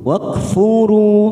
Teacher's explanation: Ketika kita wakaf di sini, maka kita panjangkan dua ketuk dulu. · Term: mad jaiz munfasil